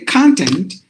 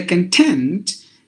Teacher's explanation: it means it's a verb because you're stressing the second part